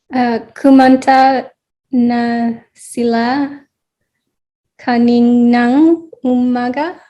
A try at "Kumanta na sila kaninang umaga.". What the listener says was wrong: Yes, yes, yes, yes, yes. Very good, and you got it.